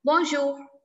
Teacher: A little H sound in the end.